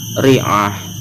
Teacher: Jika diwakafkan maka dibaca dengan hak mati